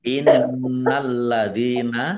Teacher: nun tasdid bacaan gunah dibaca mendengung ditahan biar tampak dengungannya. Lam suknya dibaca double ada tasdidnya.